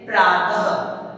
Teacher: विसर्ग का उच्चारण ख की तरह होता है